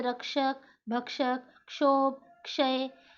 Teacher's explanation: क्ष में क और श दोनों आधी आधी ध्वनि है और उसमें अ का स्वर मिलता है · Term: संयुक्त व्यंजन